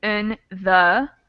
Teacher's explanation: So in and the both get changed to schwa sounds. It would become more like in the. · But these function words, in and the, almost always get changed to the schwa sound.